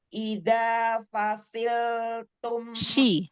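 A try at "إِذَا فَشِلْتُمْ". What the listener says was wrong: Huruf shinnya. Idza fasil.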